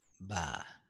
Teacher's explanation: The way we pronounce it is B, but in Tibetan it's ba. But it sounds more close to pa, pa.